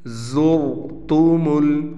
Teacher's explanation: यहाँ पर ज़ा का हमने खुसूसी ख्याल रखना है, रा को हम मोटा पढ़ेंगे